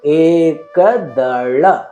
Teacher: ಇಲ್ಲಿ ಗಮನಿಸಿ, ಏ ದೀರ್ಘಾಕ್ಷರ, ಏಕದಳ. ಳ ಎಂದು ಉಚ್ಚರಿಸಿದಾಗ ನಿಮ್ಮ ನಾಲಿಗೆಯ ತುದಿಯನ್ನ ನೀವು ಮಡಿಸಿ ಅದನ್ನು ಸ್ವಚ್ಛವಾಗಿ ಉಚ್ಚರಿಸಬೇಕು.